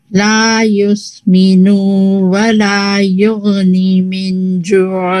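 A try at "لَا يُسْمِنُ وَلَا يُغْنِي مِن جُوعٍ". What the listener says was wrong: यानी उसमें करेक्ट करने के चक्कर में ना ये वाव यहाँ से भी निकला नहीं है, इसको मार्क कर लें, इसको प्रैक्टिस करेंगे। और दूसरा युगनी का या छोटा हो जाता है जल्दी में ना, तो युगनी इज टू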